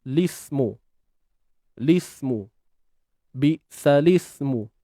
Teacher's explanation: Lam mati jumpa sin mati tak boleh nak baca. Maka sukun pertama iaitu pada lam ni digugurkan dan digantikan dengan baris bawah. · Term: iltiqa' sakinain